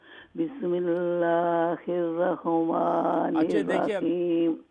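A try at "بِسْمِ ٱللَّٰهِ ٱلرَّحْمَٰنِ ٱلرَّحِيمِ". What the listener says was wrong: अब बिस्मिल्लाह रहमा हाँ पे कलकल है, मैं कई दफ़ा आपको कह चुका हूँ। रहमानिर रहीम, बिस्मिल्लाहिर रहमानिर रहीम, हाँ पे कलकल है, तो राह, ये जो हा जो एक्स्ट्रा आप करती है हा, ये गलत है।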